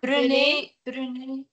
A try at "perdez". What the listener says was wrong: Non, c'est pas prendre, c'est perdre, perdre. C'est pas prendre, perdre. Perdez.